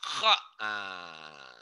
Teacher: Ini seperti membunyikan K dengan H digabungin.